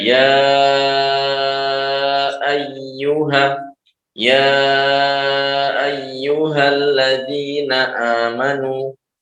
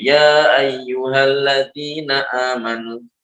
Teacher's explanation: Boleh dibaca seperti mad wajib 5 atau 6 harokat. Boleh juga dibaca seperti mad tabi'i yang hanya 2 harokat. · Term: mad jaiz